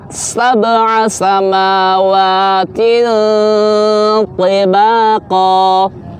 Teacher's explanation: pengucapan tebalnya huruf to pada posisi kasrah